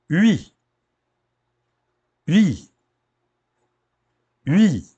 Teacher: Começa como U e acaba como I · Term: ditongo